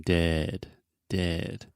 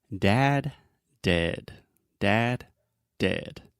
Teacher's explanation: dead your mouth is much more closed it's just like you're talking normally